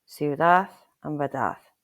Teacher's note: at the end of the word, it's like a soft TH